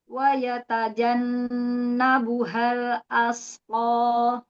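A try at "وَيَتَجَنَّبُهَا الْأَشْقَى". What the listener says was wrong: huruf shin. Tafasinya kurang.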